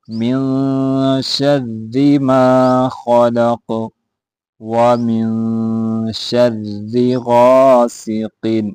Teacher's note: یہاں را موٹا نہیں پڑھا جائے گا، باریک پڑھا جائے گا۔